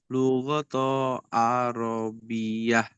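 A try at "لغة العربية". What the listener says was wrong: Bukan lugoto Ustaz, lugota. Iya, lugotal arabiyah.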